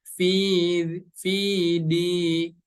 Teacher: huruf dal berharokat kasroh bertemu dengan huruf ya yang berharokat sukun, maka cara membacanya harus dibaca panjang dua harokat.